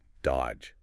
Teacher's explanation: You don't say that middle D at all. It's just dodge. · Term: Completely silent